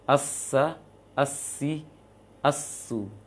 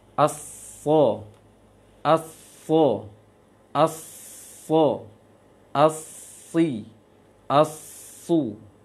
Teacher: Kalau sin tipis, assa, assi, assu. Untuk sad tebalkan dia, naikkan lisannya.